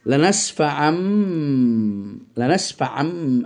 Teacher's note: মিমান মানে মিম দ্বারা পরিবর্তন হবে তানবিন অথবা নুনের উচ্চারণটি, কিন্তু বা বহাল থেকে যাবে তার বহাল তবিয়তে।